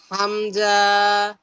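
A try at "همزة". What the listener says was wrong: টান হবে না, হামজা।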